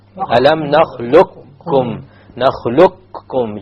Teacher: You immediately move on to the kaf and you drop the qaf.